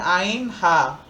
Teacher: কণ্ঠনালীর মাঝখান থেকে উচ্চারিত হয়